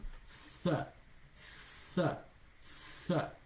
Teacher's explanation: So the tha, you blow here in between the teeth and the tongue.